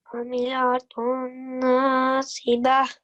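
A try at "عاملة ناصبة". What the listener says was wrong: Just make sure to prolong it a little longer. Amilatun nasibah.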